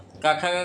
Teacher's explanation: क ख ग बोला जाता है कंठ से